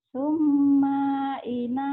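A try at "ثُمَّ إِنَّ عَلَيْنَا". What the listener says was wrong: Jangan ditahan. Kalau ada madnya, iya. Ini kan enggak ada madnya. Ini enggak. Segera ya.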